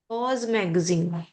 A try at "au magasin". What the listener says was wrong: Oh, au magasin. Look here, we have X, but it's not pronounced. It's pronounced like the masculine. Au magasin. au magasin, only if we have vowel after, then we're going to see, for example, United States, aux États-Unis. We're going to do la liaison only if there is vowel after. But if we don't have vowel, au. Ils vont au magasin.